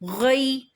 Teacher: یا ساکن اس سے پہلے والے کسی حرف پر زبر ہو، ایسا یا لین کہلاتا ہے۔ یا لین کو ایک حرکت سے تھوڑا سا بڑھا کے پڑھتے ہیں، لیکن اتنا نہیں بڑھاتے کہ وہ 2 حرکت تک چلا جائے۔ غین یا زبر غی، یا غین فتح یا سکون غی، غی۔